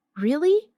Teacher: when they are surprised, their voice goes up.